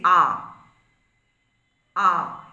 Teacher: এই স্বরধ্বনি উচ্চারণের সময় দেখা যাচ্ছে জিউহাগ্র সর্বনিম্ন বিন্দুতে রয়েছে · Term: নিম্নস্বর, নিম্ন স্বর